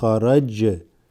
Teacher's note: Remember the jim has a slight qalqala